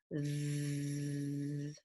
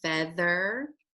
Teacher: The second sound that TH represents is the th sound. And that sound is a voiced sound. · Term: voiced th sound